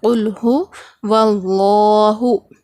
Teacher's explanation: لفظ اللہ کے لام کو ہم موٹا پڑھیں گے